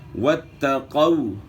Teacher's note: تا کے اوپر شد ہے، تا کی شد کو جو ہے نا آپ نے خوب جماؤں کے ساتھ ادا کرنا ہے. واتقوا، قاف جو ہے موٹے حروف میں سے ہے، قاف کو آپ نے موٹا پڑھنا ہے، باریک نہیں پڑھنا. باریک پڑھیں گے تو چھوٹا کاف بن جائے گا، حرف چینج ہو جائے گا.